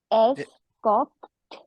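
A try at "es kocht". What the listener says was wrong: कॉक्ट, एस नहीं आएगा।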